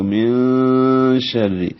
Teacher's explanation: شین حروف اخفاء میں سے ہے، اس لیے نون ساکن پہ آواز کو چھپائیں گے ، من شر نہیں ہوگا، من شر، شین میں آواز منہ